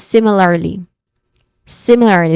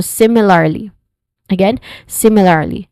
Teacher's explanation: Similarly first syllable sim is the stress syllable here.